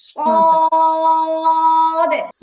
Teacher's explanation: সদ কলকলা হবে, হালকা করে কলকলা হবে।